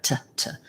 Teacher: When that happens, the T acts like it's at the beginning of a word, which means we say a true T, regular T, where we have a puff of air